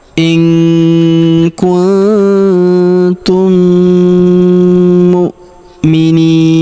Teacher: In kuntum kemudian huruf mim sukun bertemu huruf mu yang berharakat tasydid maka mim sukun melebur ke huruf mu. Kita leburkan ya. Kita tahan dan kita dengungkan. Kita tahan dengungnya dua sampai 3 harakat.